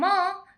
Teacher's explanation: म ओष्ठ से भी होगा और नासिका से भी होगा। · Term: पंचम वर्ण